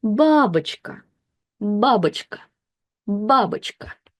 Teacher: the first syllable is stressed, which means that this O is again unstressed. So we'll read it as babuchka.